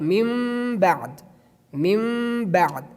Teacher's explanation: When there be the letter Ba, we change the Sakin Noon to Mim, and we change the Tanween to Mim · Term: Iqlab